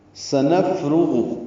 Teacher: سین کو جلدی سے پڑھنا ہے صفیر کی آواز سے، حروف صفیریہ میں سے ہے، صفت غیر متضادہ ہے صفیر کی صفت.